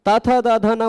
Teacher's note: त थ द ध न बोलना होता है तो जीभ मुंह के अंदर से आ रही हवा को हम दांत पर छू करके रोक दिया करते हैं